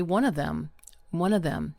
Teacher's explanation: the word of, o f, often simply becomes uh.